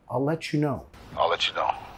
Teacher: A veces vamos a vincular let you, let you. I'll let you know con el sonido ch, ch.